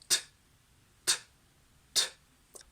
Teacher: So the tongue goes t, t, t. Plosive means that the tongue against the alveolar ridge blocks the airflow completely, and you will get a sort of explosion when you release the tongue. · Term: voiceless alveolar plosive